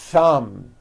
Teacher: Notice how long I'm holding the TH sound.